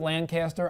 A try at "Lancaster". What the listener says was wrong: Lancaster. We're not from Calendar. Lancaster. That's how you pronounce it. Lancaster.